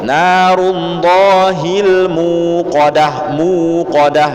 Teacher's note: waw dibaca panjang 2 harokat. Jangan dijadikan hamzah, tidak ada huruf hamzah di situ. Itu muqadah, M-U-U, U-nya 2, muqadah. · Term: mad tabi'i